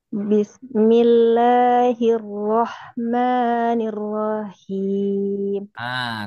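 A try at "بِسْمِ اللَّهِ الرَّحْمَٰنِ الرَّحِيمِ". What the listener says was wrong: Tahan dulu ro yang keduanya. Bismillahirrahmanirrahim. Ro-nya jangan dipanjang. Bismillahirrahmanirrahim.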